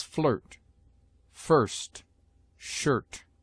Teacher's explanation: I is often sounded before R as a short U